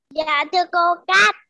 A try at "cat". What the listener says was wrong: Cat. Rồi nhớ con cuối nha.